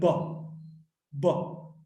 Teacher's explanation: Pa is a voiceless sound. And ba, the vocal cords are held closely together. When the air passes through, there's a lot of vibration.